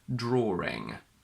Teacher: a lot of people use an intrusive r inside a word. If we take the word draw, that ends on an o sound spelled as AW.